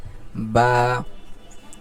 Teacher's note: দুই ঠোটের ভিজা জায়গা থেকে উচ্চারিত হচ্ছে বা আর এটা কয় সেকেন্ড হবে এক সেকেন্ড এইযে উপরে দেওয়া আছে এক সেকেন্ড বা একেবারে বেশি টানো যাবে না যে বা আবার একেবারে অল্প অল্প যে বা এরকম না বরং এক সেকেন্ড পরিমাণ লম্বা হবে।